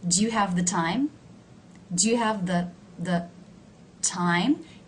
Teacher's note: do you see how the word the is low in pitch